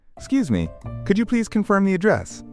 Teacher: Pay attention to the rising intonation on address, because it's a question, and then the slightly falling intonation on wrong way as you state your concern